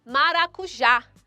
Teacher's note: Já é a sílaba mais forte, por isso ela é oxítona.